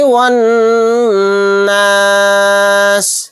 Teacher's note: یہاں پر بھی دیکھیے نون کے اوپر تشدید ہے، یہاں پر بھی غنہ کریں گے. واو کو ڈائریکٹ نون میں ملائیں گے، یہ الف اور لام نہیں پڑھے جائیں گے